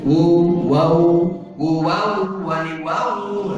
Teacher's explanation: sifat lin yang ada di waw dengan di iya ketika mati itu jelas lunaknya itu terasa